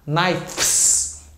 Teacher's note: A mesma coisa, se eu fosse falar knives, o FS naturalmente vai virar VS.